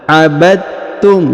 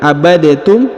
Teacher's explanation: Mutaqarribain ini artinya sama ya, memiliki kemiripan ya, memiliki kemiripan di dalam makhorijul huruf. Maka kemudian huruf dal dileburkan ya, masuk ke huruf ta ya. Abadtum, jadi bukan abadetum tapi abadtum ya. · Abadtum, jadi bukan abadetum tapi abadtum ya. Langsung dileburkan huruf dalnya, dileburkan ke ta tanpa harus membaca lagi huruf dalnya dengan bacaan qalqalah atau pantul ya.